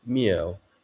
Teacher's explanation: It would become mjewH in Middle Chinese, so with a falling tone